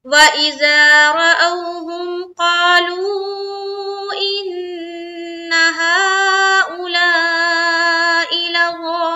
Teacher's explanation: इन्ना में नून मुशद्दद का गुन्ना, हा में मद, यहाँ पर भी मद, और हमजा को जल्द पढ़ेंगे, मारूफ का ख्याल रखें, लसौल में भी मद करते हुए लाम में मिलाएंगे, लाम वापिस लू और वा मद्दा और नून पर वक्फ।